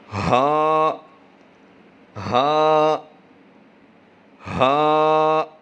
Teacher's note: یہ حلق کے نیچے والے حصے سے ادا ہوتا ہے